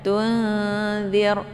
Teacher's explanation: ada nun sukun bertemu dengan huruf za ya, dibaca dengung ya sambil disamarkan nunnya. Tunzir ya, ini ikhfa awsat.